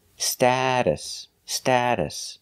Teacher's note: We're using the short A sound like apple and black cat, sta, status. The T in the middle is pronounced like a fast D,